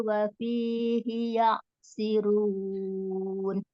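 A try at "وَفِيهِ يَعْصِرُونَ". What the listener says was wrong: Ya'si wa fihi ya'sirun. Shad itu. Hi-nya pendek. Hi-nya pendek. Wa fihi ya'sirun.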